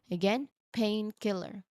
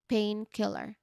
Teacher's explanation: So it's painkiller with a slight pause between the two parts.